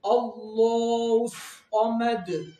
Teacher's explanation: اللہ کا نام موٹا بھی پڑھیں گے اور کھڑی حرکات ہم کھینچ کے بھی پڑھیں گے